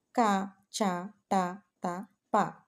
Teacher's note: కఠినముగా పలకబడే వాటిని పరుషములు అంటారు కఠినం అనేదానికి గట్టి ప్రయత్నం అని అర్థం వీటికి శ్వాసములు అని కూడా పేరు